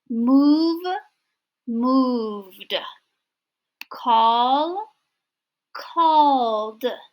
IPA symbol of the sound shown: d